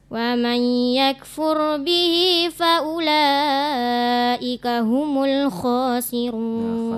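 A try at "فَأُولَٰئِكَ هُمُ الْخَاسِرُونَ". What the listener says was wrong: Nah, khasirun itu betul, kha di atas yang kurang ya. Jadi kita baca kha-nya itu tepat pada makhrajnya ya.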